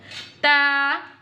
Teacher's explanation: Ta pronounce from the tip of the tongue touching the roots of the top two front teeth.